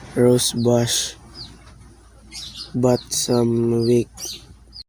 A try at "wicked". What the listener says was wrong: Rose bush was mispronounced, and instead of saying wicked, he said weak.